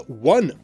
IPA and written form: wʌ (one)